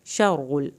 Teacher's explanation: रा को पुर करें, रा की शद अदा करें।